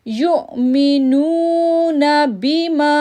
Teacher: پھر نو کو ہم کھینچیں گے کیونکہ واو ساکن سے پہلے پیش ہے، تو ہم پڑھیں گے یؤمنون بما۔